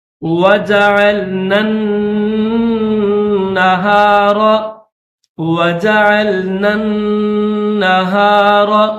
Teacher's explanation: بغیر تشدید والے نون کو تشدید والے نون کے ساتھ ملائیں گے اور غنہ کریں گے، کیونکہ نون مشدد جہاں پر بھی آئے گا تو اس کے اوپر غنہ کیا جائے گا۔